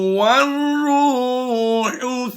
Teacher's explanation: واو کو را سے ملائیں گے، یہ الف اور لام دونوں سائلنٹ ہوں گے